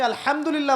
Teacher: হায়ে হুত্তি, এটাকে বলে বড় হা। উচ্চারণ কোথা থেকে করতে হয়? মাঝখান থেকে।